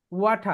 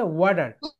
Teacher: এটা হচ্ছে ব্রিটিশ উচ্চারণ ওয়াঠা, এন্ড আমেরিকান উচ্চারণ হচ্ছে ওয়াটার